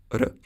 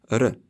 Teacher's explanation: The Swedish R is usually rolled, much like Spanish or Italian. R. You don't have to make it long, r.